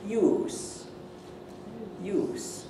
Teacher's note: with a long vowel and then an S, people will probably think you're saying use with a Z. If you say use, used with a short one and a Z, they'll probably think you're trying to say the noun, which should have an S.